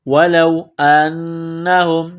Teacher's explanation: وَلَوْ أَنَّهُمْ واو زبر و لام واو زبر لو ولو انہم نون مشدد ہے، غنہ کریں گے، آواز ناک میں چھپائیں گے، ہا کو میم کے ساتھ ملانا ہے۔